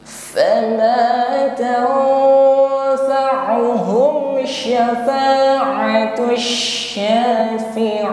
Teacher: Fama mengucapkan nun sukun bertemu huruf fa di sini. Nun sukun kita samarkan pada huruf fa dengan bunyi dengung ya, sifatnya ikhfa. Mengucapkan nun sukun langsung bersiap pada makhraj fa.